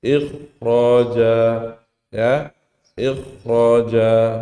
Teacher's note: Ya, pengecualiannya pada huruf ya kha sukun sebelumnya kasrah, tapi setelahnya ada huruf ra yang tafkhim, maka dia dibaca tebal seperti biasa